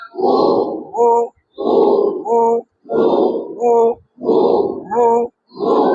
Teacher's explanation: একবারে উ বলবেন না, উ বললে হামজা হয়ে যাবে। হ্যাঁ দুই ঠোঁটের গোল করে ফাঁকা জায়গা থেকে একটু বয়ের উচ্চারণ আসবে। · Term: ওয়াও পেশ উ